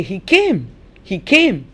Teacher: the stresses on came